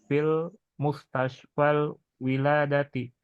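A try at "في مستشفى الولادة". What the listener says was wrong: Mustasfalnya jangan beralif lam. Fi mustashfal.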